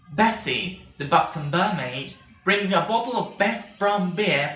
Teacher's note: remember that the b sound is voiced so it's not going to be as plosive as p but still you need to have a puff of air in the sound